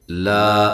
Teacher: الف مدہ ہے، ایک الف کی مقدار کے برابر لمبا کرنا ہے۔